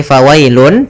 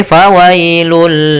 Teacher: bunyi nun sukun bunyi Nun yang dimatikan atau bunyi n maka ketika dia masuk Bunyi n-nya hilang langsung masuk ke hurufnya yaitu bunyi lam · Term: idgham